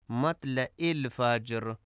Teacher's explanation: مطلع الفجر، مطلع میں توئے کو تے پڑھا جاتا ہے، مطلع الفجر جو کہ درست نہیں ہے، درست ادائیگی مطلع الفجر ہے۔ مطلع میں عین کو حمزہ پڑھا جاتا ہے، عین کی ادائیگی درست نہیں کی جاتی